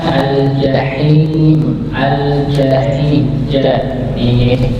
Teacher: Tapi bedanya huruf jim ini rapat, tengah lidah bertemu dengan langit-langit, tapi posisinya rapat